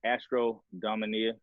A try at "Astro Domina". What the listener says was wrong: It's just Astro Domina. You added an I.